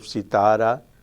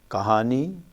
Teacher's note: heavy syllable but not the final one as in malayalam but the middle one